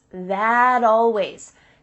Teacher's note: we link together words by making the final t change into a d